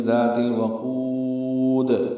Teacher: قاف پر پڑھیں گے، اب قاف کو لمبا کریں گے، واو مدہ ہے اور دال ساکن کر رہے ہیں تو لمبا کریں گے، مد عارض سکون بن جائے گی. ذات الوقود، دال پہ قلقلہ ہوگا. ملانے کی صورت میں ذات الوقودی دال کی زیر پڑھنی ہوگی.